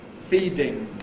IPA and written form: ˈfiːdɪŋ (‘feeding’)